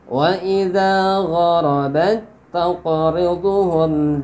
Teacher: tak mati bertemu tak harakat, diidghamkan ke huruf tak yang berharakat tanpa guna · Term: idgham mutamatsilain